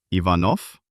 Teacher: At the end of words, it falls asleep and turns into the voiceless F.